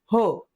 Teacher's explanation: ह चा उच्चार होत असताना काय होतं? आपल्या फुफ्फुसातील हवा तोंडावाटे मोठ्या प्रमाणावर बाहेर फेकली जाते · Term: महाप्राण